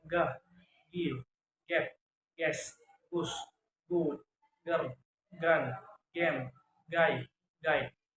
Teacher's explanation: Voice velar stop sound